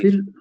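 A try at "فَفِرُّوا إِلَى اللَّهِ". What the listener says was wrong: واؤ پڑھا جاتا ہے ففروا.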